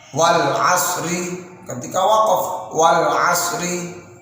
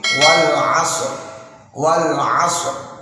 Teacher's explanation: ketika waqaf maka huruf tersebut tetap dibaca, namun dibaca mati atau dibaca sukun. Nah, contoh wal asri tidak seperti itu, tapi wal asr, wal asr setelah huruf shad langsung ro-nya tebal.